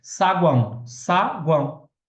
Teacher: guão, eu tenho ali uma semivogal, uma vogal, uma semivogal. Ali formando um tritongo